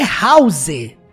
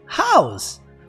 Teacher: se pronuncia house, com um sonzinho de Z no final